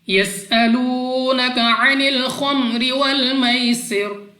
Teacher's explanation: یسألونک عن الخمر والمیسر، سین سیٹی والی آواز کے ساتھ پڑھنا ہے، واو ساکن سے پہلے پیش واو مدہ ہے، 2 سیکنڈ تک لمبا کریں گے۔ عین اپنے مخرج سے ادا ہوگا۔